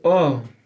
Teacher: उच्चारण स्थान। तो आ का उच्चारण स्थान कहाँ से होता है? कंठ से।